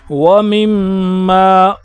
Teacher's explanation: व मिम्मा, यहाँ पर देखें गुन्ना आया है, मीम पर क्या है, तशदीद है, तो इसको गुन्ने की तरह पढ़ेंगे